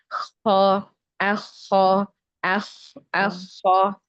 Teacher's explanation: huruf kho ini dia makhrajnya ada di tenggorokan bagian atas. Kemudian cara mengeluarkannya dengan digesek ya. Jadi tidak bersentuhan.